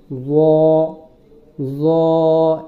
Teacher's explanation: জটা উচ্চারণ করার সময় জিহ্বার আগা উপরের দাঁতের আগার সঙ্গে লাগিয়ে মোটা করে বলতে হবে। জ এভাবে জ বলবো না।